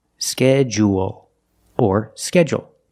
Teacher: we notice the DU making the J sound, like in juice and jump.